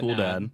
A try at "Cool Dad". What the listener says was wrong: probably put a different emphasis on that. It comes out sounding like Cool Whip.